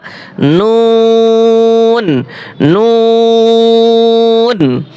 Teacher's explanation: 9 number মখরাজ, জিহ্বার আগা, জিহ্বার আগা তার বরাবর উপরের তালুর সঙ্গে লাগাইয়া, জিহ্বার আগা তার বরাবর উপরে তালুর সঙ্গে লাগাইয়া নুন